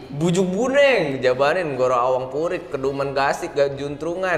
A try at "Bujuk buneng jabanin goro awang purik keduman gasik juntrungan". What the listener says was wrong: Enggak. Kedumannya tuh masih keselipet tadi.